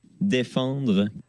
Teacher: Moi, j'entends un N, hein, personnellement, et vous entendez qu'il finit sur le dr beaucoup plus fort que moi.